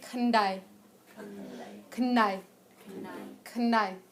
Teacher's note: A lot of people either hear only the N or the D. They don't often hear it as an N and a D together, but that's actually what it is. It's not a full N and it's not a full D.